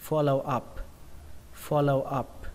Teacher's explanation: Up này có chữ P các bạn nhé, P nó bắn hơi ra một chút